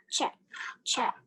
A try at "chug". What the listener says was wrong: You had cheg.